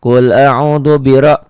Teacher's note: Ra-nya juga qasar tapi ra-nya dibaca tebal. Kenapa? Karena ra-nya baris di atas. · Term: tabkhim